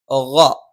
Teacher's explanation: ഗ തൊണ്ടയുടെ മുകൾ ഭാഗമാണ്.